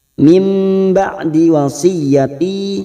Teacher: ada nun sukun bertemu ba namanya bacaan iqlab membalik dan menukar